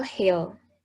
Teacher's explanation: And the last is glottal sounds are made by moving the vocal cords close to one another. English has a voiceless glottal fricative h